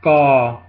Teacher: it's like a soft k between a d and a k so it's not aspirated at all it's like spanish g uh k i like to transcribe it